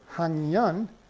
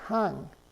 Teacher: the K is pronounced eng in front of a nasal sound